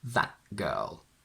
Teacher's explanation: That girl, where, as you can hear, I am blocking the air after the a from that, and I swallow the t and transform it into this glottal stop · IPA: /ʔ/